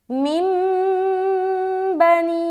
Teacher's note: چھوٹی سی میم بنی ہوئی ہے، اور نون ساکن کے بعد حرف با آ رہا ہے۔ تو جب بھی نون ساکن کے بعد با آئے تو اس نون کو، یہ جو نون ہے نا، اس کو اس چھوٹی سی میم سے بدل دینا ہے اور غنہ اور اخفا کے ساتھ پڑھنا ہے، جو کہلاتا ہے اقلاب کا قاعدہ۔